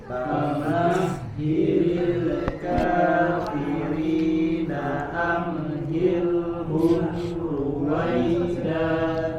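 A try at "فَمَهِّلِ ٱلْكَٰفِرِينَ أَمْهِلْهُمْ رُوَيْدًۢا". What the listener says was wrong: Ya, dan perhatikan di sini ketika huruf-huruf sukun ya tidak atau tetap mengalir suaranya, tidak terputus atau tidak ada jeda seperti pada kata amhilhum ya. Jadi jangan ada jeda di huruf-huruf sukun. Jangan amhilhum ruwaida. Jadi mengalir suaranya. Amhilhum amhilhum ruwaida.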